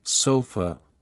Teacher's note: schw sound the schah is the most common sound in English it's an unstressed neutral sound often found in words like sofa or in the second syllable of teacher